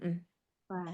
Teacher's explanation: Bibir bawah bagian dalam menempel pada dua gigi seri atas. Iya, keluar dari bibir bawah bagian dalam bertemu dengan ujung gigi seri atas. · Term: huruf fa